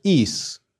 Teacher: the dative for both the masculine and neuter is a long i followed by an s